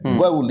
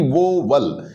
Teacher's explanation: बाद में जब ये समझ में आया था कि यार इसमें तो सिलेबल 2 नहीं, इसमें तो एक ही है, ये वाउल है, वाउल यानी एक जो साउंड है वो औ की साउंड है, न कि वो वल, ऐसे बोलेंगे तो वो गलत हो जाएगा।